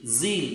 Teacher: जील sound हालांकि symbol एक जैसे हैं, लेकिन यहां पर बोलने का जो तरीका, जील में जब बोलोगे ना आप, तो आपको फील होगा कि हमारे वोकल कॉर्ड्स में से हवा के अंदर कहीं ना कहीं घर्षण हो रहा है